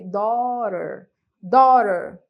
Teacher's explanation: Esse T tem um som de R, daughter, daughter, ok?